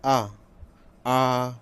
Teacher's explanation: मुख पूरा खुला रहता है विव्रत में, केवल आ जैसे डॉक्टर को आ करके दिखाना, जैसे मुंह खुलवाता है डॉक्टर, तो ऐसे याद कर सकते हैं। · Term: विव्रत स्वर